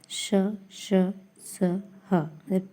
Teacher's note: उष्मा की तरह एक संघर्षण होता है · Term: उष्म व्यंजन